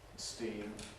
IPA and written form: stiːm (steam)